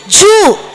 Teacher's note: அர் சொல்லி பாருங்க நாக்கு மடிந்து மேல் தாடையை தொடும் ஜூ அப்படின்னு சொல்லுங்க வாய் குவிந்து உள்ள இருக்குற காற்று எல்லாம் வெளில வரும்